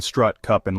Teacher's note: an open mid- central unrounded vowel